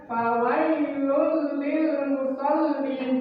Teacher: n-nya hilang diganti huruf l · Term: idgham bila gun